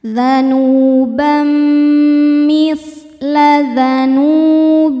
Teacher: idgham bi gunnah karena ada tanwin fathah menghadapi huruf mim. Cara bacanya tanwinnya dimasukkan ke mim kemudian dengungkan. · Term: idgham bighunah